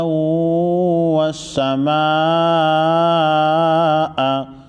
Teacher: بڑی مد کو 5 الف کے مقدار یعنی 5 سیکنڈ لمبا کریں گے